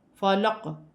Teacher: لام کو قاف کے ساتھ ملا کر پڑھا جائے گا اور قاف ساکن ہے، قلقلہ پیدا ہوگا